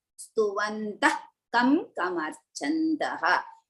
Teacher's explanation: So now after Visarga, ka is followed. So as a result, we are going to use half ha.